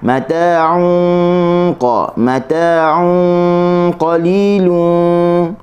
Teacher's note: Ikhfa tanwin di sisi huruf qaf. Huruf qaf huruf yang tinggi, huruf isti'la. Maka dengunnya akan naik tinggi ke makhraj huruf qaf.